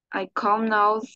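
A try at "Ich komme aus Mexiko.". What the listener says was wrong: Ich Nada más valdría, hay que corregir el ich, porque me lo dices como ay, como en inglés, creo. Ich, ich. Sí, tu i la estás pronunciando ay.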